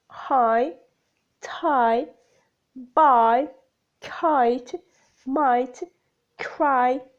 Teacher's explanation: lips shift from neutral to loosely spread position characteristics of i the glide begins in an open position between front and center moving up and slightly forward